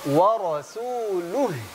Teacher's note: H sukun sebelumnya dhammah, pengucapannya kembalikan mulutnya segera. Dimajukan, monyong. H-nya kembalikan segera.